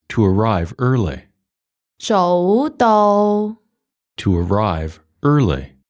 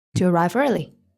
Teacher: It's a high rising tone and it's followed by mid-level flat tone.